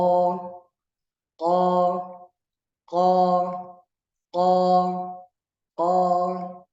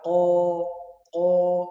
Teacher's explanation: makhraj qaf ini tempatnya di aqsal lisan, pangkal lidah, bersamaan dengan langit-langit daging. O, o, ko, ko, ko, ko, tanpa memonyongkan bibir, bukan ko, salah.